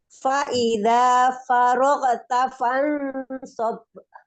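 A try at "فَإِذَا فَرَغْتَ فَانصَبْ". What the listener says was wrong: Huruf gonnya jangan faroge, tapi farog. Dialirkan terus nggak boleh putus. Fa idza faragta fansab.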